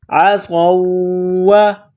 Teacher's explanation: صاد میں سیٹی کی آواز پیدا کرنی ہے، صاد کو موٹا کرنا ہے